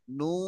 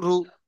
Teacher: নু টান হবে আর রু টান হবে না